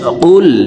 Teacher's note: কফ হরফের উচ্চারণ জিহ্বার গোড়া তার বরাবর উপরের তালুর সঙ্গে লাগাইয়া উচ্চারণ করে পড়তে হবে।